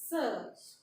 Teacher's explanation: वर्थस्य मतलब जीभ हमारी मसूड़े से स्पष्ट होते स्पर्श करती है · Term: वर्थस्य ध्वनि